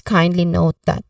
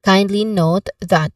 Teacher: the stressed syllable here is on the word kindly, the first syllable kind.